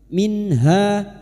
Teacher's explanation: maka bunyi nun sukun dibaca jelas tanpa mendengung. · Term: idhar halq, idhar halki